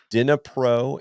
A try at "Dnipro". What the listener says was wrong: Dnipro. The D is silent.